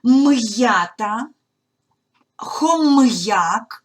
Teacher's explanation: не зливаємо приголосний з йотованими і приголосні читаємо твердо